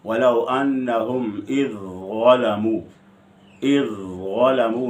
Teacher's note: اور متجانسین میں ذال ضوا کے لیے مدغم ہے، وَلَوْ أَنَّهُمْ إِذْ ظَلَمُوا، اذ ظلموا میں ذال کا ضوا میں ادغام ہے، یعنی ذال مدغم ہے اور ضوا مدغم فی ہے